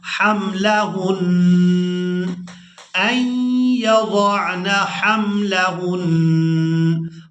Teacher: اب یہاں پر بھی جب وقف کریں گے تو وقف کی صورت میں ہم نے اس نون سے اس زبر کو ہٹا دینا ہے اور نون پر غنہ کے ساتھ وقف کرنا ہے